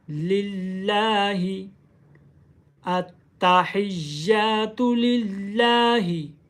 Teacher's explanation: लाम के ऊपर खड़ी ज़बर है, इसको एक अलिफ की मिकदार लंबा करें।